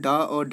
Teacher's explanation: डा और ढा जो है वो उत्क्षिप्त व्यंजन होते हैं